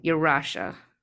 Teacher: they put the stress on the middle syllable